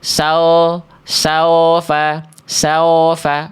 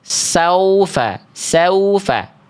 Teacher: bentuk vokal u saufa bukan saofa